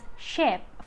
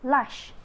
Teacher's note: voiceless alpha palatal fricative